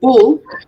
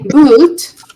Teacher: If I say bull, bull is short, bull. If I say boot, it's a bit longer.